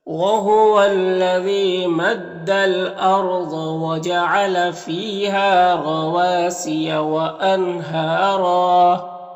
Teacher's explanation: را کے اوپر 2 زبر ہے، یہاں پر وقف کریں گے تو ایک زبر کے ساتھ الف پڑھیں گے اور را کو پر پڑھیں گے